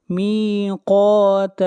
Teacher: قاف کو موٹا پڑھیں گے، قاف حروف استعلا میں سے ہے، ان یوم الفصل کان میقاتا۔